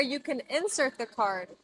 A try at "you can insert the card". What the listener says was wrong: I cannot say you can insert the card. The verb is pronounced insert. We put the stress on the second syllable. So we have two words. We have insert, putting the stress on the first syllable, and that's a noun. And we have insert, putting the stress on the second syllable, and that's a verb.